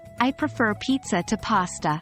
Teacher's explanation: if you say this with a falling intonation it sounds like a firm statement of preference but add a stress on Pizza I prefer Pizza to pasta